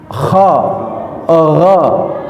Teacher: kha ini adalah mahraj al halqu ada di atas adnal halqi. Kha, harus ngorok.